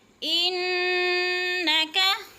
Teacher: ان پہ شد ہے، ناک میں آواز لے جائیں گے اور مشدد پڑھیں گے، شد بھی ہے غنہ بھی۔